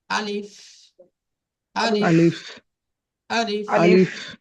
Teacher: আলিফ মুখের খালি অংশ হইতে উচ্চারিত হয়